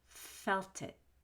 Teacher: Felt it is linked together with TIT because of the LT and the vowel after it.